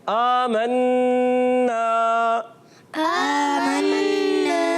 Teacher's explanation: नून मुशद्दद में एक अलिफ का गुन्ना होता है